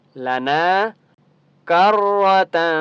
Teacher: تنوین کے بعد فا ہے تو یہاں پر اخفا ہوگا